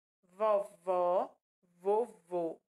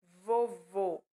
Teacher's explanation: Vovó, bem mais aberto, né, o som de se ouvir. Vovô, mais fechado